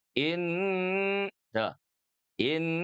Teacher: Jadi yang digunahkan itu adalah huruf nun sukunnya. In dua ketuk ya. In tuh in. Jadi tidak boleh tergesa-gesa juga tidak terlalu lama. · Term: ghunah, gunnah